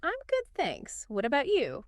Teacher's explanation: Stress on thanks and bout.